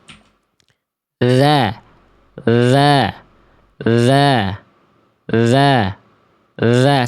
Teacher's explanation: Bunyinya bisa beda, Teman-teman. Karena fokus utama dzal bukan menjulurkan ujung lidah, tapi menyentuhkan ujung lidah ke ujung gigi atas